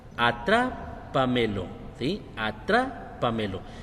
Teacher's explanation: la sílaba que lleva más fuerte o que lleva tilde, pues básicamente es tra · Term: sílaba tónica